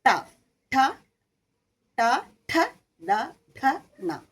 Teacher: ടയിലേക്ക് വരുമ്പോൾ നാവ് അല്പം മടക്കി മുകളിലേക്ക് ശരിക്കും മുകളിലേക്ക് നമ്മൾ മുട്ടിക്കണം ട ഠ ട ഠ ഡ ഠ ണ ഇത് മുഴുവനും മുകളിലേക്ക് മുട്ടിക്കുമ്പോഴാണ്